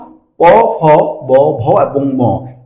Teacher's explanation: এই পাঁচটি বর্ণ আমাদের ঠোঁটকে স্পর্শ করে উচ্চারিত হয়, যার কারণে ওষ্ঠ অর্থাৎ আমাদের উপরের ঠোঁট তো ওষ্ঠ, এই উপরের ঠোঁটকে স্পর্শ করে উচ্চারিত হয়, যার কারণে এগুলোকে বলা হয় ওষ্ঠ বর্ণ।